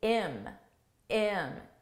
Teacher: by just dropping the H sound